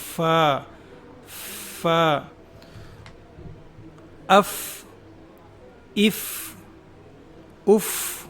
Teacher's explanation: अगला हर्फ है फा दोनों हठों के दरमियान से हवा खारिज होगी। फ ऊपर के दांत नीचे के होठ में इस तरीके से लगेंगे कि दरमियान में थोड़ा सा गैप रहेगा जिससे हवा बाहर की तरफ निकलेगी।